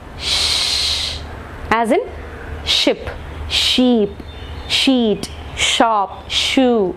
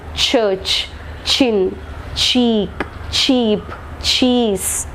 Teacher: Palato-alveolar sounds. The tip or blade of the tongue is against the alveolar, along with the front part of the tongue is raised towards the hard palate, thus producing palato-alveolar sounds such as sh, j, ch and j.